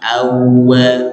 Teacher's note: jadi dari fathah yang rahangnya terbuka kemudian masuk ke huruf wau sukun atau di sini wau tasdid gitu maka harus dimonyongkan juga [Musik]